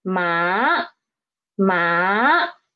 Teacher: change the pitch right when we read it so it is the pitch is rising up rising up from three to five ma ma this is second tone now let's see the tone